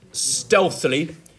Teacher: forward slash over the stressed syllable like this so stealthily that stress syllable on stealth then illy is weak